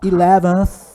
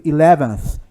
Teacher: Esse aí é o som do TH, é o TH que não é pronunciado, é o unvoiced